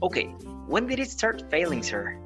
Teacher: at first you're gonna rise your intonation and then it will fall. This intonation is used in questions that require more information. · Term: riseful intonation